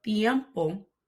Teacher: notice that I'm placing my tongue between my teeth in order to soften the letter t